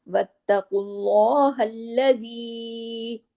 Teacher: वत्त सख्ती से ता जुड़ेगा, क्योंकि ता पे तशदीद है, डबल ता है